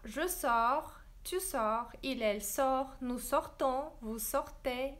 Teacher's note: C'est toujours la même terminaison et c'est toujours le S et le T et NS et NT qui ne se prononcent pas en français. Notice that we don't pronounce the consonants at the end of words and verbs too.